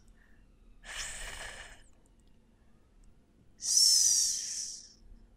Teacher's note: You cannot hear the sound of my voice. And that is because these are unvoiced fricatives.